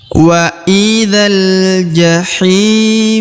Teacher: huruf ta yang di ujung karena dia berharakat sukun maka kita sedikit menghembuskan udara tipis ya men hembuskan udara tipisir baik kita beralih ke contoh berikutnya